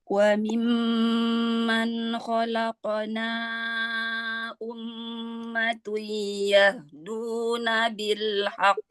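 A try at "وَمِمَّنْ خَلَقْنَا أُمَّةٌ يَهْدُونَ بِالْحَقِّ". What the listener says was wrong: Ummatun, tahanannya kurang tadi idgham dilgunanya.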